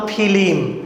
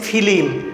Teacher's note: মাঝখানে একটা কিন্তু ই চলে এসেছে রূপান্তরিত শব্দে, যেটা আমার মূল শব্দে ছিল না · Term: মধ্যস্বরাগম